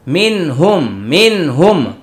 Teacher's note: মিনহুম এটা হলো নুন সাকিনের পরে হা ইজহার, স্পষ্ট হবে হুম।